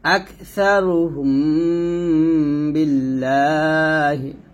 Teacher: মিম সেকেন্ডের পর বা, আবার মিম সেকেন্ডের পর বা আসছে, সেখানে আমরা কি করতেছি, গুণনা আদায় করে পড়তেছি।